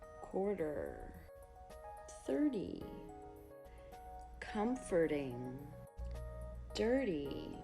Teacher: We also use the flap T after vowel plus R.